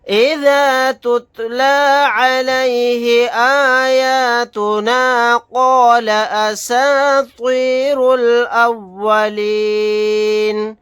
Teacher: یہاں پر قاف کو موٹا یعنی پر پڑھیں گے۔ آیت کرنے کی صورت میں نون کو ساکن بنائیں گے۔